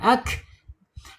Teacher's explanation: ujung lidah menyentuh lawannya yaitu langit-langit yang berdaging